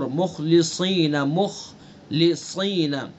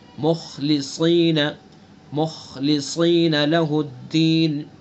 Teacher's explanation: دھیان سے خا کو بھی پر پڑھیں گے، صاد کو بھی